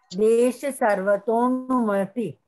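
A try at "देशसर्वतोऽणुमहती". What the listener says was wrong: महति को ती आगे थोड़ा पूरा बोलिए, देश सर्वतोनुमहति।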